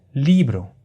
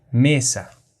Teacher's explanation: Li y me son las sílabas tónicas y bro y sa son las átonas